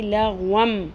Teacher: دو زبر والی جو تنوین ہے وہ جب میم کے ساتھ ملے گی لغوم تو وہ میم میں بدل جائے گی